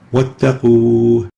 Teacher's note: The waw here preceded by a dhamma, not followed by a hamza or a sukoon. So the rule is to extend the waw for 2 units as a natural mad.